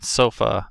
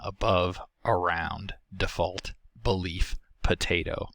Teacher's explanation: It is the mid-central lax unrounded vowel found in unstressed syllables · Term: schwa